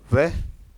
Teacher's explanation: इन वर्णों को दांत और होठ दोनों एक साथ यूज करके बोला जाता है या उपयोग में लेकर बोला जाता है, इसलिए इन्हें दंतोष्ठ कहा जाता है।